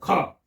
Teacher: ख और घ पर झटके से और ज्यादा मात्रा में हवा निकालनी पड़ रही है